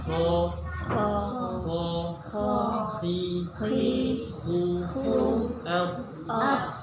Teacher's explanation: Kho mirip dengkuran kita. Oke, yakni di tenggorokan paling atas